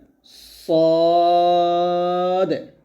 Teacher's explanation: সদ জিহ্বার আগা, সামনে, নিচে, দুই দাঁতে মাঝে লাগাতে হবে, তাহলে এটা বলতে হবে সদ।